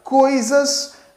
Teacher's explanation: Nós temos o i ali soando mais fraco portanto sendo uma semivogal